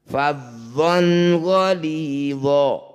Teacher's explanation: Nun sukun atau tanwin bertemu salah satu huruf hamzah, ha, kho, ain, ghoin dan ha itu disebut bacaan idhar halki. Nun sukun atau tanwinnya baca dengan jelas, tidak usah didengungkan. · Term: izhar halki